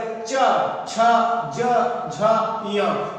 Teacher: अगला है क्या है, अब चा वर्ग च छ ज झ य, चा वर्ग के जितने भी ये पांचों वर्ण हैं इनको बोलने में क्या होता है कि जीभ जो होती है वो सीधा और सीधा तालु को छूती है, यानी कि मुंह में छत को छूती है